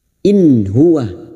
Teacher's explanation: In nun sukun bertemu ha. Nun sukun dibaca jelas tanpa mendengung